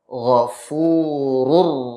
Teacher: Ketika tanwin bertemu dengan huruf ra, suara nun pada tanwin tersebut menjadi hilang, masuk secara sempurna kepada huruf ra berikutnya. Misalkan ghafurun rahim. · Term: idgham